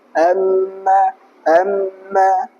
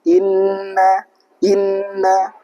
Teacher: Alkisum adalah tempat keluarnya dengung atau ghunah pada huruf nun dan juga mim ketika bertemu dengan dengan tasydid atau diucapkan secara idgham, ikhfa atau iqlab. Jadi nun atau mim ketika ketemu dengan tasydid itu makhrajnya keluar dari rongga hidung. Amma amma keluarnya dari hidung.